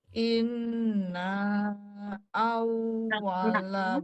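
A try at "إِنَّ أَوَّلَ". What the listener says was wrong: pendek. Inna awwala inna pendek maknya.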